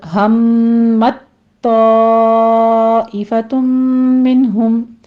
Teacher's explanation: لہمت میں میم مشدد ہے، غنہ واجبہ پہلے کریں گے ، آگے تا ساکن ہے اور آگے اس کے بعد تا